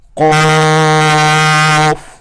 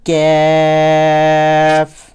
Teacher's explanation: پہلا قاف جو ڈاٹ والا قاف ہوتا ہے اسے ہم نے موٹا کر کے پڑھنا ہوتا ہے اور دوسرے کو باریک